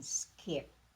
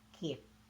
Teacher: in skip it is not pronounced like the K in Kip the difference lies again in the lack of aspiration